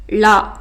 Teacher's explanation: நாவின் இரு பக்கங்களும் தடித்து மேல் அன்னத்தின் நடுப்பகுதியை தொடுவதால் பிறக்கும் எழுத்து லா